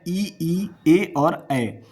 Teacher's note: जब आप ई का उच्चारण करोगे तो आपका जीभ का जो अगला भाग होता है, जिसे अग्र भाग बोलते हैं, वो एक्टिव होता है